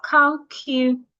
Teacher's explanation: So it is the A here, the A in the last syllable that changes into a schwa